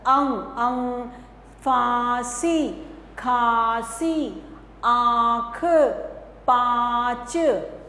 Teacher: तो बच्चों यह जो है अनुनासिक जैसे चंद्र बिंदु लगाते हैं इसमें आवाज करते हैं हम अ अ जो हल्का सा नाक से होता है और गले से होता है